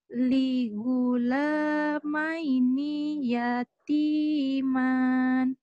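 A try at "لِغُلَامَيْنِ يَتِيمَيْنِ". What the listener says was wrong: Yatimain. Di situ ninya juga pendek ya. Liulamaini. Ninya pendek. Liulamaini yatimain.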